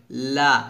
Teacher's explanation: জিহ্বার আগার সাইডটা সামনের উপরের এক পাশে দাঁতের গোড়ার সঙ্গে লাগিয়ে উচ্চারণ করতে হবে। অর্থাৎ সামনের উপরে যে কোনো এক পাশে দাঁতের গোড়ার সঙ্গে লাগিয়ে উচ্চারণ করতে হয়, লাম এভাবে, লা।